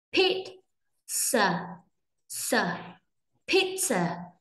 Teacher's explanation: Pizza, trọng âm rơi vào âm đầu cho nên âm đầu sẽ đọc nhanh rất sẽ đọc to hơn lên, nhấn mạnh hơn lên ạ. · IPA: /ˈpiːt.sə/